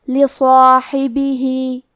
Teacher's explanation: کلمت لصاحبہ میں صاد ہے اور اس کے بعد مد الف ہے، حرف الصاد حروف تفخیم میں سے ہے تو ہم یہ حرف کو اور اس کے بعد مد الف کو دونوں کو بھاری آواز میں پڑھیں گے